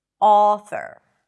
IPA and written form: ˈɔ.θəɹ (author)